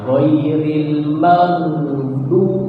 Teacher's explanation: padahal ghain bukan huruf qalqalah. Dia seperti G, mag, tapi suara dan udaranya ngalir.